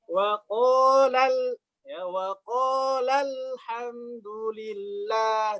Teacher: waqala ketemu dengan alhamdulillah, maka di naber di lam karena untuk membuktikan bahwasanya ada alif yang hilang. Ya, contohnya waqalal ya waqalal hamdulillah.